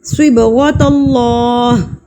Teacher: صب، با کو ہم ہلا کے پڑھیں گے. غا، حروف مستعلیہ میں سے، موٹے حروف میں سے، تو غا کو ہم نے پر کر کے یعنی کہ موٹا کر کے پڑھنا ہے. صبغۃ اللہ، اللہ سے پہلے زبر آ گئی تو اللہ لفظ پر پڑھا جائے گا.